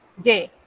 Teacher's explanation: cuando usted dice yo tengo, es un sonido abierto igualito que la E del español